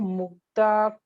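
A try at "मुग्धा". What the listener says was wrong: Yeah, you have to stress on all Mahapranas. It is Mugdha. Okay, it is Mugdha.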